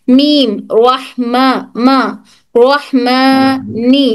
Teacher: मीम दोनों होंठ lightly बंद होना है, दोनों होंठ लाइटली बंद होकर तरी से टच होकर हर मीम अदा होता है।